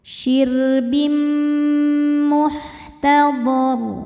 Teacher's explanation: Berikutnya ada idgham bi gunnah karena ada tanwin kasrah menghadapi mim. Cara bacanya tanwin dimasukkan ke mim disertai dengung.